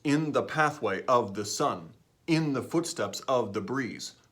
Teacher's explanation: it's alternating stress and unstressed in those syllables you as a native English speaker can't help but alternate those